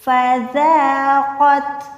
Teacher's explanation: زال جو ہے ہمیشہ باریک رکھی جاتی ہے، اس میں کیا ہوتا ہے وسل ساؤنڈ یعنی سیٹی کی آواز نہیں آتی، سافٹ لیٹر ہے۔